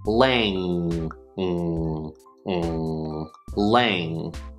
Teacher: It is not the N, n, n, n sound, it's the velar nasal. This means that we're going to put our tongue in the same place that we would put it for the k, k, k sound or the g, g, g sound.